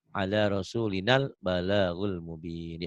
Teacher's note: Rasulina panjang, kalau ketemu alif lam jadi pendek.